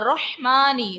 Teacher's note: رو کو پر پڑھیں گے, رو پر زبر ہے اس لیے. میم پر کھڑی حرکات ہے, اس کو ہم ایک الف کی مقدار تک کھینچ کر ادا کریں گے.